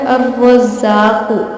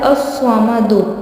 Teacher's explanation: اس میں اگر آپ لام پڑھتے ہیں اس نام میں تو آپ غلطی کرتے ہیں، کیونکہ اس کا صحیح ورڈ ہے حروف شمس، لام کے بعد حروف شمس یعنی را آ رہا ہے تو لام سائلنٹ ہو جائے گا